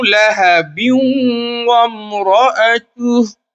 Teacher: دوسری صورت یہ ہے کہ ہم لہبیوں کو واو میں ملاتے ہوئے چلیں گے، اور یہاں پہ ادغام میں واو کا قاعدہ یہ ہوگا کہ جب تنوین یا نون ساکن کے بعد واو آئے گا تو غنہ کے ساتھ پڑھا جائے گا